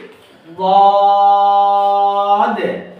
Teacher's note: এক হলো মোটা করতে হবে, আরেকটা হলো চার আলিফ টান দিতে হবে, আরেকটা হলো শেষে একটা ধাক্কা দিতে হবে